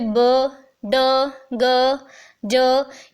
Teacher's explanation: अब ये कैसे साउंड्स हैं, यहाँ पे कुछ कॉन्सोनेंट साउंड्स आपके सामने हैं, जैसे ब, ड, ग, ज। ये सारे साउंड जब आप प्रोड्यूस करेंगे ना तो आपके वोकल कॉर्ड्स जो हैं ऑटोमेटिकली वाइब्रेट करना शुरू कर देंगे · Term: वॉइस्ड साउंड्स